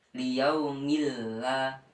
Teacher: Nah, cara membacanya yaitu diidghamkan, tanwin diidghamkan pada lafaz setelahnya yaitu lam. Jadi tanwin tidak terbaca, tetapi langsung masuk ke huruf lam selanjutnya · Idgham bila gunnah yaitu kebalikannya idgham bi gunnah, memasukkan tanpa adanya mendengung